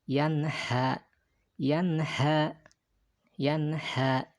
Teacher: maka sin nun ini juga dibacanya jelas, ya, jelas dan pendek, yanha, yanha, yanha, gitu ya, bukan yanha, bukan juga yanha, tapi jelas nunnya yan dan pendek, yanha, gitu ya.